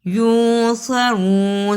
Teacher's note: صاد کو موٹا پڑھا، را کو بھی پر پڑھا